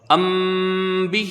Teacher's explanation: جب ہجے کی جائے گی تو میم کو اس میں غنہ نہیں کریں گے، جب با آگے پڑھا جائے گا تب اس میں اخفاء ہوگا